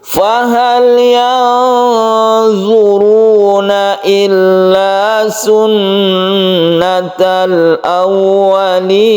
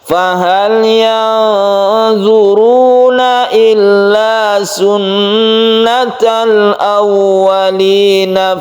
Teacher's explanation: Ini adalah mad arid lisukun yang bisa panjang sampai 3 alif. Bila kita berhenti di sini, kalau kita teruskan maka menjadi mad tabi'i biasa.